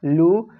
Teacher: পেশের আওয়াজ সাধারণত একটু সামনের দিকে যায় ও উচ্চারণ সময় ঠোঁট গোল হয়